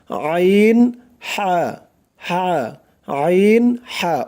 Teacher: গলার মাঝখান থেকে গলা চিপে উচ্চারণ করতে হবে